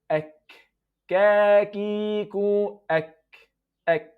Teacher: Kaf, a little bit forward toward the lips.